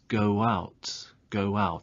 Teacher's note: We have go and we have out. Now, go ends with a vowel sound and out begins with a vowel sound. Now, to make a smooth transition between the two sounds, there is a linking w sound.